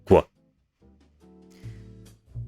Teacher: So, for example, quo, such as in equus in Latin for horse, you tense the k, and at the release of this tension, you make a w with the lips. So instead of k, w, it's quo. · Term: labialized velar consonants